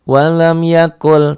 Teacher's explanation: Ini idgham ya, jadi masuk. Jadi bunyi nunnya masuk ke lam. Walam yakul, tuh idgham bila guna, karena nun mati ini bertemu dengan huruf idgham yaitu lam.